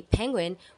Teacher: when we say penguin we forcefully release Air through our closed lips creating a small burst of sound